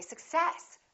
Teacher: in this case we stress the second part and we say success